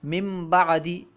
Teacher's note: من بعدی ہے، مین ہے اس کے بعد بعد ہے، لیکن ہم نون کو نہیں پڑھتے، من بعدی ہے پڑھتے ہیں مم بعدی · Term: نون ساکن